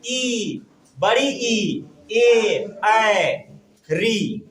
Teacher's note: स्वर का उच्चारण करते समय जीव का अधिक आगे वाला भाग अधिक क्रियाशील है। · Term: अग्र स्वर